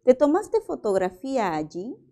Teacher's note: También el tono es ascendente, mira los signos, mira las palabras que encabezan la pregunta, no hay pronombre interrogativo.